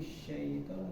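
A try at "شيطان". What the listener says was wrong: Sya-nya dibaca dulu, baru habis itu masuk ke huruf ya. Sya masuk ke ya sukun. Tetapi membacanya ditunaikan dulu sya-nya. Sya masuk ke ya sukun. Jangan sya-nya ini terpotong. Jangan sampai terpotong, tapi harus ditunaikan sya-nya.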